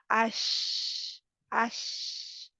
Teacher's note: शीन जो है वह फैलती है उसकी आवाज मुंह में फैल जाती है